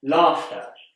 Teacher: You might expect there to be an R in laughter, but there isn't.